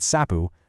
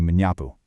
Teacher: When this prefix attaches, the starting S of the root word is completely swallowed up and replaced. It just vanishes.